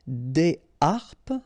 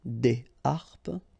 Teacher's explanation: so you don't make the liaison between the two